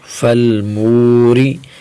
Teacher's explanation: فلام زبر فل، میم واو پیش مو، فلمو، را زر ری، فلموری. را کے نیچے زیر ہے تو را کو بریک پڑھیں گے، ٹھیک ہے. جس را کے نیچے زیر آ جائے تو وہ را بریک پڑھی جائے گی.